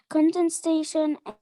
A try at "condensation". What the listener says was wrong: It's not station. Condensation.